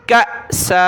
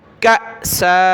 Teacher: حمزہ ساکنہ جھٹکا دیا، یہ باریک کاف ہے، اس کو حمزہ ساکنہ کے ساتھ ملایا